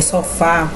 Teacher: se ela tá na última sílaba como você tá percebendo aí em sofá ela é oxítona